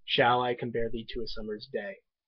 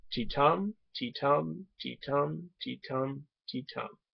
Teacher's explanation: Each foot is composed of an unstressed followed by a stressed syllable. Now I can describe it musically in this form: ti-tum, ti-tum, ti-tum, ti-tum, ti-tum. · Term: iambic pentameter